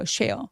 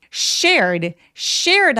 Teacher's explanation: 어떻게 소리를 내셔야 되냐면 쌍시옷보다 더 센 느낌으로 쌍시옷 세게 욕할 정도로 shared 하셔야 돼요